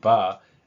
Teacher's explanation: when the voicing starts sooner, I have a ba sound